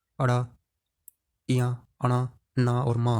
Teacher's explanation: ये पांचों अनुनासिक व्यंजन अड़ा, इया, अणा, ना और मा है, क्योंकि इन सभी को बोलने में नाक का सहयोग लिया जाता है